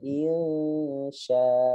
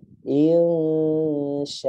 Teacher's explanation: Nggak ngelihat fathatainnya. Padahal ya dia hukumnya mat iwad, harus dibacanya panjang mat.